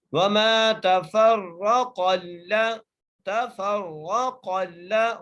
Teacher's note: अगली है वमा तफ़र्रक़ल्लज़ीना, वाव के ऊपर ज़बर है, मीम को एक अलिफ की मदार खींच के पढ़ना है, ता के ऊपर भी ज़बर, फा को रा से मिलाकर पढ़ना है, रा को मोटा करके पढ़ना है और आगे क़ाफ है, क़ाफ को भी मोटा करके पढ़ना है, क़ाफ को लाम से मिलाना है।